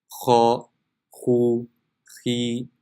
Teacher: The makhraj of kha is the top of the throat nearest to the mouth.